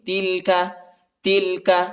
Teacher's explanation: یہ چھوٹا کاف ہے ٹھیک ہے، اس کو ہلکا پڑھیں گے، موٹا نہیں پڑھیں گے